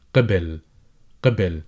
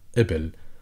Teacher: in dialect, people tend to replace the qaf with an easier sound, which is called the glottal stop, and pronunciation-wise, it is a, as the first sound in a, as in apple.